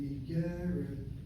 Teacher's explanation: I'm hitting the second of the 3 syllables.